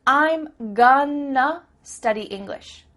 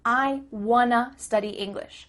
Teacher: That word to simply becomes a.